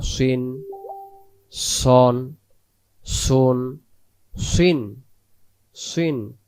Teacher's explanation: সদ অক্ষর সামনের নিচের দাঁতের আগা থেকে শীষ সহ মোটা করে পড়তে হয় মোটা মানে মুখটা গোল হবে যে অক্ষরটা বলার সময় মুখটা গোল